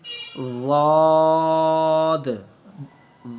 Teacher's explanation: زبان کا left side, اس کی بیس لائن پوری لیفٹ سائڈ کی، اوپر والی جو ہماری داڑیں ہیں ان کے ساتھ پوری لائن کے ساتھ ٹچ کرتی ہے ضاد. اور منہ کی خلا سے آواز نکالتے ہیں اس طرح ایک موٹی آواز، بیکاز یہ اس کا شمار جو ہے موٹے حروف میں ہوتا ہے، جیسا کہ آپ اوپر دیکھ رہے ہیں صاد کے ساتھ ضاد، موٹے حروف میں اس کا شمار ہے.